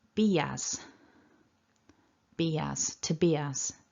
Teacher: there's this little subtle y that pops in. Be as.